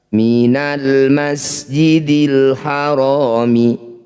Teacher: Alif diikuti lam sukun, di sini ada 2, dua-duanya disebut bacaan izhar qamariyah. Cara bacanya lam sukun baca dengan jelas.